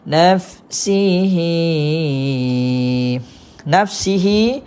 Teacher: baca panjang dua harakat